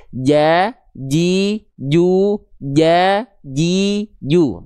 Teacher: pastikan tengah lidah kita nempel rapat ke langit-langit, di atasnya jangan sampai ada celah.